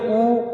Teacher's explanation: ऊ को बोलिए ऊ, तो ओष्ठ गोल हो रहे हैं